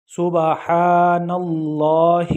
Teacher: ہا کو کھینچنا نہیں ہے، جسٹ اس کے نیچے صرف کسرہ ہے، زیر ہے